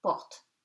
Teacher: O before a pronounced consonant, except the Z, becomes O, short one